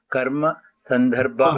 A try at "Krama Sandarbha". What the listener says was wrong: Karma, it is Krama.